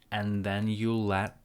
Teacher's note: And sounds like N, cancel D, and then again it feels like a very long N between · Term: linking